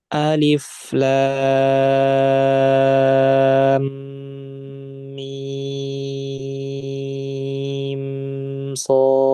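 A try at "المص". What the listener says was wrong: Mimnya ada kelebihan sedikit ya gunanya. Nanti itu dikurangi. Karena ini izhar syafawi. Nah, pas mimnya itu mim sukunya jangan sampai kelebihan. Untuk kelebihan sedikit ya, coba dikurangi lagi.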